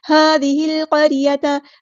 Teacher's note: ذال ہم باریک نرمی سے ادا کریں گے · لام یہاں پر لام قمریہ ہے، ظاہر کر کے پڑھیں گے ، قاف ہم نے پورا ادا کرنا ہے، ہیوی لیٹر ہے